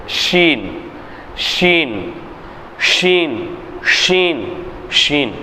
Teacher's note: நாவின் நடுப்பாகத்தை மேல்முறைசில் சேர்த்து உச்சரிப்பது